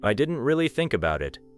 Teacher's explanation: Maybe really and think carry more energy than didn't or about it, depending on the meaning. Do not exaggerate.